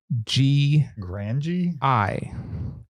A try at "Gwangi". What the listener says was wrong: You're pronouncing like Gwangi, like a W. Oh, you didn't say the GW.